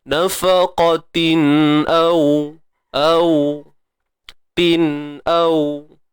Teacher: Wa ma anfaqtum min nafaqatin faqatin fa nipis, qa tebal selamanya, isti'ala, angkat pangkal lidah, tin, tanwin bertemu hamzah, izhar halqi, izhar, jelas.